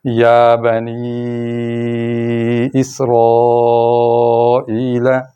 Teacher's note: تو یا پر چھوٹی مد ہو رہی ہے کیونکہ آگے حمزہ نہیں، اور نی پر بڑی مد ہو رہی ہے چونکہ آگے حمزہ آ گیا ہے۔ حمزہ چونکہ اگلے لفظ کا